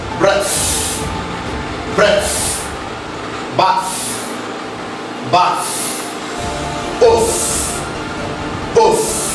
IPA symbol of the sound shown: θ